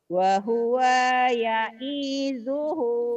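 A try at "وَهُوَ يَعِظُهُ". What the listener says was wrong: Pendek. Wa huwa ya'iduhu. Yang panjang ujungnya doang.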